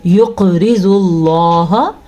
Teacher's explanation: قاف پہ ساکن آیا تو یہاں پہ قلقلہ ہوتا ہے جھٹکا. جیسے کہ اس کو یقرض اللہ کے بجائے ہم پڑھیں گے یقرض اللہ، اسی کو قلقلہ کہتے ہیں.